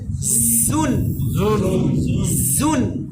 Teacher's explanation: জু এটা দাঁত, এটা মানে প্রথম জাটা হবে দুই দাঁত থেকে, উপরের দাঁত নিচের দাঁত।